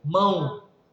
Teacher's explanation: você escreve O, mas tem aquele som breve de U